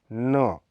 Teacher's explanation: त वर्ग के उपयुक्त वर्णों की भांति दांत ही है न यह अल्प प्राण घोष ध्वनि है इसका उच्चारण स्थान भी दांत ही है इसके उच्चारण की प्रक्रिया में जीभ की नोक से व्स का